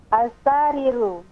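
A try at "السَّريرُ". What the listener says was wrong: As-sariru. Sinnya pendek. Sinnya pendek. Sinnya pendek, ra-nya panjang. As-sariru. Jangan as-sariru, jangan. Sinnya jangan dipanjangkan. Ra-nya sudah betul, ra-nya panjang, betul. As-sari. As-sari.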